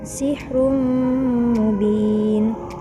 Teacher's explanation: ada tanwin bertemu dengan mim, termasuk hukum bacaan idgham bi gunnah. Cara membacanya dengan didengungkan.